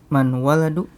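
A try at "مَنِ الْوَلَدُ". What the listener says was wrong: ya, man al waladu, ada alnya. Nah, kalau dibaca sambung menjadi iya, manil waladu. Lihat, sukun ketemu sukun. Sukun yang pertama huruf apa? Nun.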